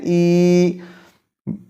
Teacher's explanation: وسط لسان کو مزید تھوڑا سا اپنے مد مقابل تالو سے نیچے لانا ہوگا، تب جا کے یہ یا ادا ہوگی